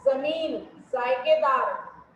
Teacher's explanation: इसके उच्चारण में जीभ का अगला भाग ऊपर के दांतों के पास खुरदरे हिस्से से थोड़ा सा ऊपर की छत यानी मूर्धन्य के किनारे को बहुत हल्के से छूता है और हवा हल्की सीटी सी बजाती है। मतलब पूरा हमें टच नहीं करना है, थोड़ा सा, दोनों को मिलाना नहीं है, थोड़ा सा खोलेंगे तब बोलते हैं ज।